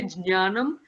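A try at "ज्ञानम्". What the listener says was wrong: No. There has to be a j sound.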